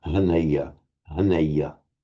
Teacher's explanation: the h in Sanskrit, and as far as we know, Pali, is pronounced as a kind of voiced H, not quite like the English h, and certainly not like a rasping h sound as the Greeks might pronounce it, but it's like a voiced.